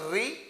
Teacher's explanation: तो हमारी जीभ थोड़ी सी मूर्धा को टच करती है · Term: मूर्धन्य स्वर